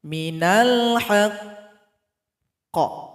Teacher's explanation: Di sini huruf qaf dan dia bertasydid. Cara berhenti pada huruf qalqalah yang bertasydid disukunkan, tunggu 2 detik baru dipantulkan.